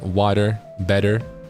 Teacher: an American style accent that has that tap